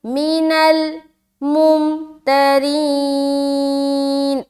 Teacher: اب نون کو لام سے ملا دیا